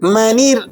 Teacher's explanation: اگر را ساکنہ ہو اور اس کے بعد اسی کلمے میں حروف مستعلیہ نہ ہو تو اس سے پہلے حرف کی حرکت کو دیکھتے ہیں، اور را ساکنہ سے پہلا حرف نون ہے، اس پر زیر ہے، لہذا را باریک ہوگی۔